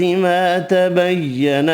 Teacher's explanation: ما تبین الف مدہ ایک الف کی مقدار میں کھینچ کر پڑھیں گے